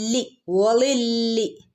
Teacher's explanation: ലാമിനെ ഒന്ന് കനപ്പിച്ച് ഓതി കൊടുക്കുക